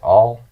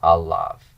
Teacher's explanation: So all with a short A becomes ah with a long A, alav.